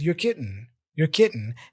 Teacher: He's not really saying kidding, which is okay too. He's going kitten, with that glottal sound.